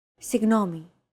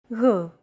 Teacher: It's like a very soft, continuous, and loosely held G, almost as if you're gargling, but don't make it sound too throaty.